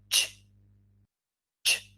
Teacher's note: So we combine t and sh, and we create ch